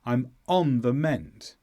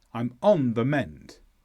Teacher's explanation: the stresses go on and mend